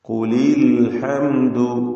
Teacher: അൽഹംദുവിലെ സാക്കിനത്തായ മീമിനെ ഇൽഹാർ ഷഫവി നൽകി മണിക്കാതെ വെളിവാക്കണം, മണിച്ചു പോകരുത്.